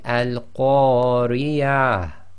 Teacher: you've got to just bring out a tiny bit of a ha sound from the bottom of your throat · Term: ha sakin